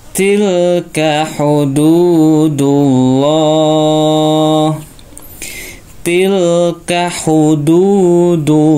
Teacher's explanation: ini lam tebal ya depannya harakatnya dumah ya maka dibaca hullah